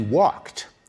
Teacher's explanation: When we say he walked, we pronounce the ed like a t, walked. When we say jogged, we pronounce it as a d, jogged.